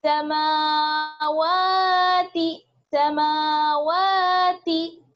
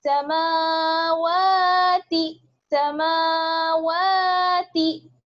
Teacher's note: दोनों को बराबर खींचेंगे मीम और वाव को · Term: खड़ा जबर